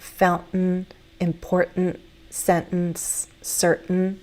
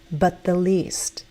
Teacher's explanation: T before another consonant sound in American English often is that glottal stop